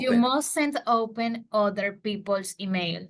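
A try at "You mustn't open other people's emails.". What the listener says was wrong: Ok, pero entre open y other hizo una pausa. You mustn't open other.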